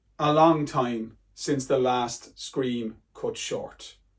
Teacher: We've got the sibilance of since last scream and short.